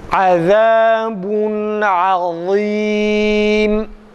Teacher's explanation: Za aynı zamanda peltektir arkadaşlar. Hem kalın hem peltek okuyoruz.